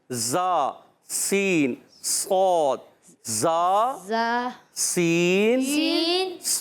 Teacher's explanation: इनका मखरज जबान की बिल्कुल बारीक नोक जिसको कहते हैं असलतुलिसान। जबान की बिल्कुल बारीक नोक और दोनों दांतों के अंदरूनी किनारे। यहां दोनों दांतों से मुराद है नीचे वाले सना सुफला यानी नीचे वाले दांत और ऊपर वाले दांत सना औलिया। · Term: सीटी